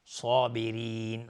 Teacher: صاد از حروف استعلاز غلیظ تلفظ میشه